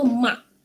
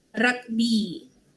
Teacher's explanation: Huruf K tu dia jadi glotis dekat akhir kata. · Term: hentian glotis